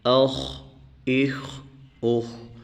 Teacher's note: حمزہ خا زبر اخ، اس خا کو موٹا کریں گے کیونکہ یہ موٹے حروف میں سے ہے